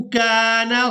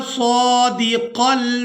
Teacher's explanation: पहले काफ को बारीक और दूसरे काफ को पुर करके अदा करेंगे